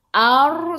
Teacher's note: sebelum ra baris atas kena baca tebal, lidah naik ke atas.